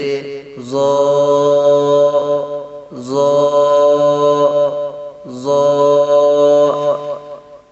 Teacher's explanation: زبان کی نوک سے جب اوپر والے دونوں دانتوں کے سرے سے لگے تو اس سے ظا ادا ہوتا ہے، جیسے ظا ظا ظا۔